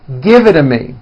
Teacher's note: the only big change comes from the T's being pronounced as D's, and this happens because the T's fall between 2 vowel sounds. If you remember in American pronunciation, when T's fall between 2 vowels, they become voiced and are pronounced as D's.